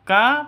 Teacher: Kaf ka panjang dua ketukan karena ada Alif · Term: mad asli